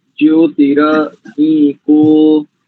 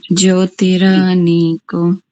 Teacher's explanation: दोनों दीर्घ है। नीको दीर्घ का उच्चारण लगभग 2 सेकंड में करना है।